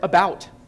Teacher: a backwards, upside-down lowercase e represents this unrounded vowel sound, the initial sound in the word about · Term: Schwa